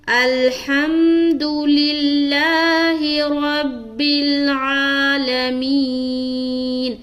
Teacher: پوری آیت میں صرف اور صرف 3 جگہ کھینچنا ہے. لا میں کھینچیں گے اور آ میں کھینچیں گے اور می میں کھینچیں گے.